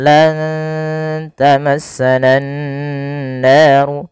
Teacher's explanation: nunnya disamarkan kepada huruf ta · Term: ikhfa